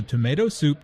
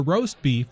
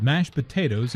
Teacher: Notice also that tomato soup, roast beef, and mashed potatoes are compound words. The stress falls on the second word in each phrase.